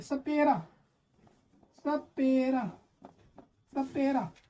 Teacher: जब आप सपेरा बोलने जाते हैं तो सा से पहले जब सा प्रोनाउंस करते हैं तो आपकी जीभ क्या हो रहा है, दांत की ओर, दांत, ये जो आपके दांत होते हैं जीभ की तरफ, दांत की तरफ बढ़ते हैं, सपेरा, सपेरा, ठीक है। तो सा का उच्चारण यहाँ पे दांत के पास से होता है